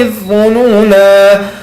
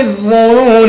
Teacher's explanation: Então reparem que eu pronunciei adh-dhununa com alif. Porém, se eu fosse juntar os dois versículos, o versículo 10 da Surah Al-Ahzab com o versículo 11, eu não pronunciaria.